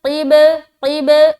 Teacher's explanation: با کے اوپر سکون ہے، قلقلہ کریں گے کیونکہ با حروف قلقلہ میں سے ایک ہے